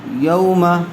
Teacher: واو ساکن سے پہلے زبر آیا ہوا ہے، اس لیے لین کا قاعدہ ہوگا۔ اس کو نرمی کے ساتھ جلدی ادا کریں گے۔